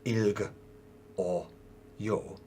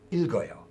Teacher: So the consonant just carries over into the vowel sound.